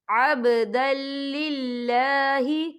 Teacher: یہ اللہ کا نام باریک پڑھا جائے گا کیونکہ اللہ کے نام سے پہلے زیر ہے